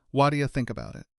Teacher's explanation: Imagine someone walks up to you and asks, "What do you want to do?" In real spoken English, the phrase what do you you undergoes a pretty dramatic structural collapse. The T sound in what meets the D sound in do, and together, they blend into a soft, quick flap sound. The word you gets reduced down to its a simple ya sound. · The T sound in what meets the D sound in do, and together they blend into a soft, quick flap sound. The word you gets reduced down to a simple ya sound, and that entire 4-word phrase collapses into a single 3-syllable chunk wadia.